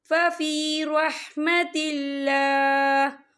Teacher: وقف کی صورت میں ہا جو ہے ساکن ہو جائے گا